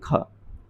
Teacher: ये कंठे भी है, स्पर्श भी है, अघोष भी है और महाप्राण में भी आती है